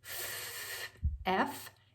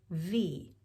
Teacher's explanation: curve a little bit now coming across to the voiced column you go right back to where that f was formed and now if you add your voice to it it becomes v